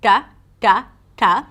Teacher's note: In Hindi and Urdu, the T is pronounced slightly differently, as the bottom part of the tongue touches the roof of the mouth: t, t, t, and it's not always aspirated.